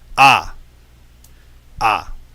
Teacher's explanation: when you produce this sound ah, you have your tongue back and low. Tongue back and mouth open. And notice that this is an ah without the roof. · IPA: /ɑ/